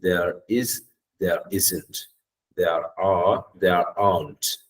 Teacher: the r sound will not be audible okay you can't hear that AR